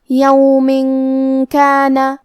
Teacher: کلمت یومن کے آخری میں میم کے نیچے تنوین زیر ہے، پھر حرف الکاف ہے، کاف حروف الاخفاء میں سے ہے اور اخفاء کا معنی ہے چھپا دینا، تو ہم یہ تنوین کو چھپاتے ہوئے اور غنہ کے ساتھ یہ حکم کو ادا کریں گے